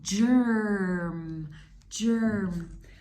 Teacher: So you don't even really hear the vowel very much. You just hear the R sound.